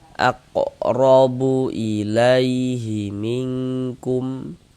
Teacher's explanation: Maka huruf ro ini kita baca tabkhim. Baca tebal sehingganya pangkal lidah kita naik terangkat ke atas. Tebalkan huruf rnya. · Huruf ra memiliki ini harokat fathah, baris satu di atas huruf ini namanya harokat fathah, atau biasanya itu disebut juga dengan tanda baca fathah atau baris fathah, itu maksudnya sama saja. Maka huruf ra ini kita baca tabkhim, baca tebal, sehingganya pangkal lidah kita naik terangkat ke atas. Tebalkan huruf ra-nya.